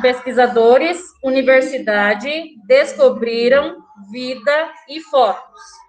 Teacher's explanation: todas essas palavras a penúltima sílaba foi a sílaba tônica foi a mais forte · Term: penúltima sílaba tônica